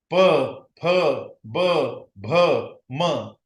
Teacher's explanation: ये ओष्ठ उच्चार है, जहां पे दोनों ओठ एक दूसरे को चिपकते और उच्चारण तैयार होता है। ऐसे सारे अक्षर, ऐसे सारे व्यंजन, ये ओष्ठ व्यंजन कहलाते हैं, ओठों से आते हैं।